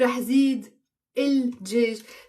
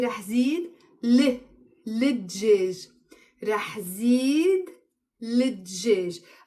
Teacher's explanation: But when I'm pronouncing it, I'm not pronouncing it رح زيد الدجاج. The spontaneous way we do it in Lebanon is we kind of flip around the il and we say رح زيد للدجاج.